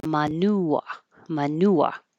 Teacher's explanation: And you'll get a lot of examples of hearing it, but keep in mind that he doesn't have a strong R at the end.